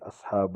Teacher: اللام کو باریک پڑھیں گے